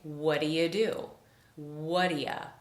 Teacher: The T in what and the oo in do completely disappear, we reduce the you to ya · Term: whaddaya